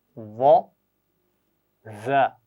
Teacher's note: पहली आवाज़ के लिए ज़ुबान की नोक ऊपर के दांतों से लगाइए और दूसरी आवाज़ के लिए ज़ुबान की नोक नीचे वाले दांतों के सिरे से। पहली आवाज़ मोटी है, दूसरी बारीक है, वो, ज़।